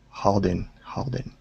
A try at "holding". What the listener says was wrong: ho instead of Hall okay try that one more time go to an o sound